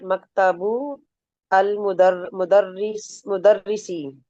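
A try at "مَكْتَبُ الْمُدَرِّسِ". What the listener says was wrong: अच्छा, अब इसको जोड़ के पढ़े ना, अल नहीं पढ़े ना। मकतबुल मुदर्रिसी।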